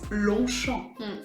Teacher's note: You can't hear the G and you can't hear the P at the end